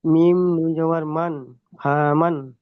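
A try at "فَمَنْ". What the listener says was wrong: হাত একটু টান হয়ে যাচ্ছে, ভালো যাচ্ছে, ফামান বলবেন, হ্যাঁ, ফামান বলে টান দিচ্ছেন। ফামান বলবেন,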